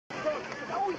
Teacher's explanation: He was noted for his raspy voice and breathy delivery.